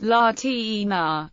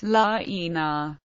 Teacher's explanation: Similarly, the voiceless post-alveolar affricate is pronounced as a voiceless post-alveolar fricative between two vowels.